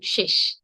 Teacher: শেষ শেষ শব্দটিতে প্রথমে রয়েছে তালব্য স পরে রয়েছে মূর্ধন্য স প্রথমে তালব্য স পরে মূর্ধন্য স কিন্তু আমরা উচ্চারণ একই রকম করে করছি